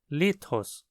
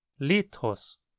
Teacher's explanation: Perceba como o Tom é mais alto na primeira sílaba litros esse acento agudo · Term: tom alto